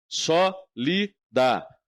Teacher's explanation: O acento está no só